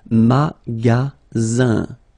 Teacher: Then you get the sound Z, alright? And then the ending here is IN, so it's nasal, goes in your nose, and it's un.